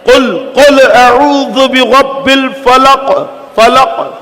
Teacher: زبان کی جڑ اور تالو کے نرم حصے سے بڑی قاف ادا ہوتی ہے